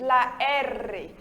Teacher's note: O R em espanhol, a gente treme mais a língua, ele é mais forte do que o nosso português